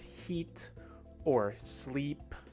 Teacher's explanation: the e sound takes place very much near the top of the mouth and also near the front